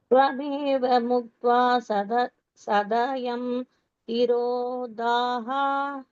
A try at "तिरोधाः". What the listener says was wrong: திரோதாஸ்னு இஸ் இருக்கு, இஸ் அடிச்சுட்டு விசர்க்கம் போட்டுக்கோங்க. திரோதாஸ் இஸ் இருக்கு இல்லையா, இஸ் தான் விசர்க்கம் ஆயிடுது.